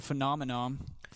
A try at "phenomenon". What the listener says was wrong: You almost had it. You just said nom instead of non.